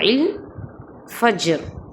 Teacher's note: பஜர்ல ஜீம் வந்து அல்கலா உடைய எழுத்து அப்போ அந்த இடத்துல நம்ம பவுன்ஸ் பண்ணி பஜர்னு சொல்லணும்